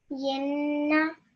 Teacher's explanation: the gluing of the ya and the noon should be 2 seconds. So the n sound for 2 seconds. But when I say the actual letter, the actual noon, that should be a quick na, not na. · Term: ghunna